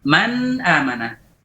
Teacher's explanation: Al-juz'ul khayshumi mawjud. Man bagian lisan dan bagian khayshum ada. Pada saat ikhfa, al-juz'ul lisani ma'dum. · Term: izhar